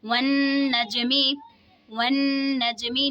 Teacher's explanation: नून मुशद्दद में गुन्ना करके पढ़ेंगे, जीम में क़लक़ला होगा।